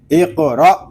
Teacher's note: حمزہ ساکنہ کو جھٹکے کے ساتھ پڑھیں گے